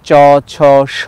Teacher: দন্তমূলের পিছনে আছে তালু, সেখানে সম্মুখ তালু, মধ্য তালু, পশ্চাৎ তালু আছে। সেখানে চ, ছ, স, যাকে আমরা তালব্য বলি, তালু থেকে তালব্য স, এগুলো উচ্চারণ করতে পারি।